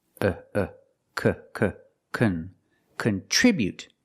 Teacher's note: The first syllable is not stressed. So we make the short sound.